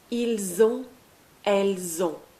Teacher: And lastly, for il and elle, we'll use on. O-N-T, we don't pronounce the T at the end. And again, there's a liaison.